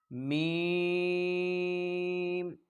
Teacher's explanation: دونوں ہونٹوں کے خشک حصہ سے ادا ہوتا ہے